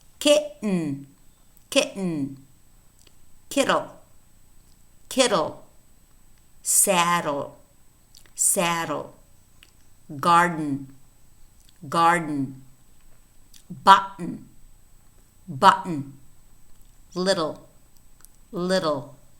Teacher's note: Whenever we have this happening, what we do is we place a small vertical line underneath either l and or n to say that we know that in these words, n or l are acting as syllabic consonants because they are absorbing the vowel, and the vowel therefore is disappearing